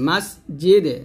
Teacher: মাস সিনটা পাতলা করবেন, স যেন না হয়ে যায়, মাস জিদে, জিম জিব্বার মধ্যখান উপতালের সঙ্গে লাগিয়ে উচ্চারণ করবেন, যা যেন না হয়ে যায়, মাস জিদ যেন না হয়ে যায়, হবে মাস জিদে, মাস জিদে।